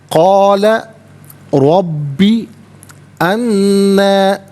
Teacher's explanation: را پر زبر ہے، را کو پر کر کے پڑھا جائے گا، با مشدد ہے، اسے جماؤ کے ساتھ پڑھیں گے۔